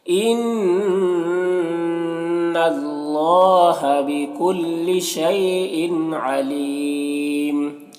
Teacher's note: ان اللہ نون مشدد غنہ ہوگا، اور یہاں پر اللہ کے لام سے پہلے نون کے اوپر زبر ہے تو اللہ کے لام کو پر پڑھیں گے، کھڑا زبر ہے، ایک الف کے برابر کھینچیں گے۔